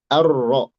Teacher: Dileburkan artinya tidak dibaca. Kita tidak baca arrahman alrahim tapi arro langsung ke ro.